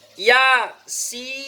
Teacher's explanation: Sin ini adalah dibaca panjang karena dia termasuk mad lazim harfi mukhaffaf. Keterangan sama kayak mim, yaitu ketika ada huruf mad berupa ya ini yang di sini bertemu huruf yang bertanda sukun sebab waqaf sin, nah itu dalam huruf maka mad lazim harfi mukhaffaf.